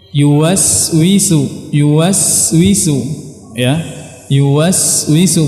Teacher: Dan huruf sin dia punya sifat yang dinamakan dengan rakhawah, mengalir. Jadi kita harus mengalirkan suara kita saat kita mengucapkan huruf sin.